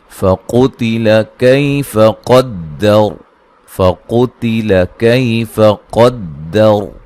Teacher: یہاں جب وقف کریں گے را کو موٹا ادا کریں گے، یہ وقفاً وصلاً را موٹی ہوگی